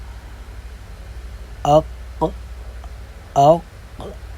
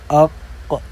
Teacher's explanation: زبان کی جو جڑ ہے وہ اوپر جیسے ہی اٹھتی ہے تو یہ آواز خود سے ہی پر ہوتی ہے۔ اگر آپ زبان کی جڑ کو اوپر کی طرف نہیں بلند کریں گے تو یہ صفت اس میں نہیں پائی جائے گی، تو یہ حرف بھی، اس کا مخرج بھی کچھ اور جا کر بنے گا۔ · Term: قاف